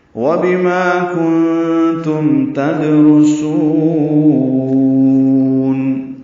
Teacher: تدرسون میں دال ساکن پہ قلقلہ ہے، را پر پڑھیں گے، سین کو باریک پڑھیں گے، لمبا کریں گے، وقفاً مد عارض للسکون ہے.